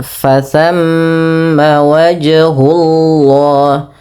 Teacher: pada lafal wajhullah, ada qalqalah, yaitu qalqalah sughra di tengah-tengah bacaan